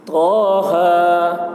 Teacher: طہ، تو اور ہا کے اوپر کھڑا زبر ہے، کھڑا زبر برابر ہوتا ہے الف مدہ کے، اس لیے کھڑا زبر کو 1 الف کے برابر کھینچ کر پڑھیں گے